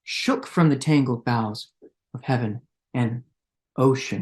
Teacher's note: not on an iamb, but on a trochee. So we have that stress right there, that monosyllabic word, shook, very violent, shook from the tangled boughs of heaven and ocean.